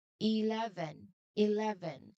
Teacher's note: So it is very important to use the strong, loud V sound in the middle. Remember, the V sound is the vibrating sound. You feel your bottom lip vibrate strongly.